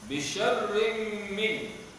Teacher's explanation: tanwin pada syarrim bertemu dengan min, idgham ma'al ghunnah